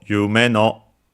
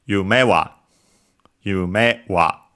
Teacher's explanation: As for specifically the words accented on the last syllable, they're treated in this case as if they were unaccented, and so the pitch remains high. So yume no, instead of, for example, if we added the particle, the topic particle wa written as ha, it would be yume wa.